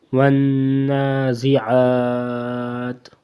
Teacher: عین کے اوپر جو کھڑی زبر ہے اس کو زیادہ لمبا کر سکتے ہیں